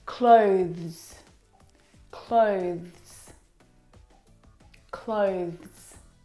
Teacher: The difficult thing about the pronunciation of this word is the two consonant sounds v and z together. Both of those sounds are voiced consonant sounds.